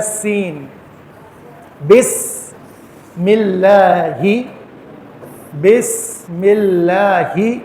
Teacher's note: من الشیطان الرجیم. بسم اللہ, سین واضح طور پہ دونوں دانتوں کو ملا کے نکلے گا